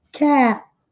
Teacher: Esse A é um som intermediário entre um A e um E. Nós abrimos mais a boca, como se fosse para falar um A, mas pronunciam E. Cat. E esse T bem sutil no final.